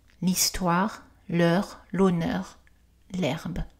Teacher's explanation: dans tous les cas le h est silencieux il n'est jamais prononcé